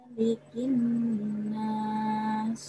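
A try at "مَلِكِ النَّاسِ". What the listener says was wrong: Maknya pendek.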